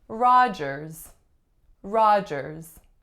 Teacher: Now, oftentimes there will be a silent D in this last name, but not always. Has 2 syllables, the winner's on the first ah, and the second syllable has the vowel followed by a voiced z.